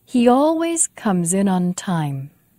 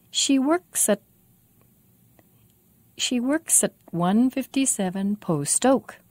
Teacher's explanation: If you have a very good ear, you might have noticed the difference in the final S of comes in and the final S of works at. The final S of comes in has voice. It sounds like z with voice. The final S of works at doesn't have voice. It's just s.